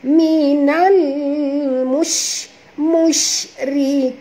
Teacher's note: huruf shim di sini jaga tafashinya. Bunyikan angin yang berhamburan itu dengan jelas.